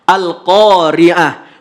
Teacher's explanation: Tapi walaupun dia huruf tamar butoh, maka ketika wakaf bunyi yang keluar adalah huruf H.